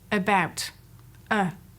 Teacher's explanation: the central short vowel that has been given the name schwa and is typically found in unstressed syllables